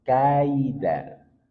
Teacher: Ada ya sukun di sini, ya sukun sebelumnya fathah, maka bacaan lin, bacaan lembut mengalir tanpa ada penekanan. Kaida, bukan kai, tapi kaida, lembut mengalir tanpa ada penekanan.